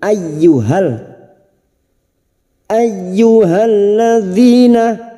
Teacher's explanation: masuk pada huruf ya yang bertasjid hanya masuk tanpa mendengung